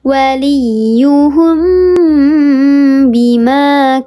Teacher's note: Kalau ikhfa syafawi mim mati bertemu dengan huruf ba. Dibacanya disamarkan disertai dengan ghunna tiga harakat lebih utama.